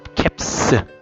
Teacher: 그 앞에 있는 p가 네, 이렇게 성대나 고막을 울리지 않는 무성음이기 때문에 뒤에 오는 복수 형태의 s는 스로 읽는다